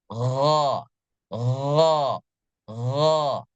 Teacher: kalau kita membaca g g g kalau dalam keadaan sukun ee jadi kita merasakan ada getaran di ujung tenggorokan · ketika membaca huruf gain angin yang keluar tidak terhembus seperti Huruf Ko